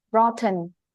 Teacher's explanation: âm thờ bật hơi lên như thế nghe sẽ hay hơn là cái âm tờ mà không bật hơi trong tiếng Việt